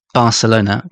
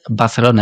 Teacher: en inglés tenemos una B muy fuerte como Barcelona, como muy casi una explosión, ¿no? De de B, pero en español todos los consonantes son más seca secos, ¿no?